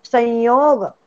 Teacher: तो नाकातून उच्चार नाही संयोग मधल्या य चा. नाकातून नाही घ्यायचं